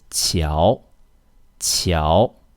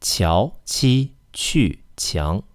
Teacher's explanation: And that's it for the xi, ji, and qi sounds. To get these sounds correctly, just remember to push the tip of your tongue against your hard palate.